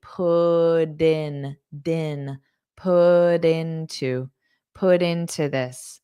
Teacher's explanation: So this double or this put into, you might pronounce it as a soft D